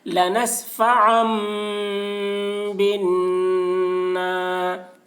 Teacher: لنسفعا بن، نون الف زبر نا، الف سے پہلے زبر ہے، الف مدہ ہوا، اس لیے الف مدہ کو ایک الف کے برابر کھینچ کر پڑھیں گے، اور نون پر تشدید ہے اس لیے نون کی آواز کو ناک میں لے جا کر ایک الف کی مقدار کھینچیں گے، اس کو غنہ کہتے ہیں۔